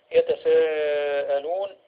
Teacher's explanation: عندنا هنا المد المتصل، وحكمه أو مقداره 4 حركات أو 5 حركات إذا جاء متوسطا للكلمة